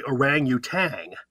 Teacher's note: most people say orangutang they add the g at the end